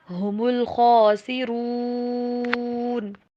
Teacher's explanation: هم کے پر سٹریس نہیں دینا، جزم کے پر زور دے کے نہیں پڑھتے